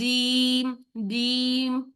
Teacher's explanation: हमने जुबान का दरमियान जब ऊपर बिल्कुल उसके ऊपर दरमियान तालू से लगाते हैं तो हम जे वाली साउंड पैदा करेंगे, सख्ती वाली।